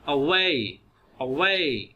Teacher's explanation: The first syllable is unstressed. So यहाँ पे जब भी a sound produce होना है ये अब start में है और वो unstressed है, उस पर stress नहीं देना, उसको लंबा नहीं करना. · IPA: [ə]